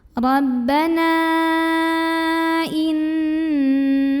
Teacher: Karena ada mad tabi'i yang bertemu dengan hamzah dalam dua kata yang berbeda, di mana mad tabi'inya adalah alif yang didahului fathah terdapat pada kata Rabbana, sedangkan hamzahnya yang i terdapat pada kata innaka. Maka nunnya dipanjangkan, boleh 4, boleh juga 5 harokat. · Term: mad jaiz munfasil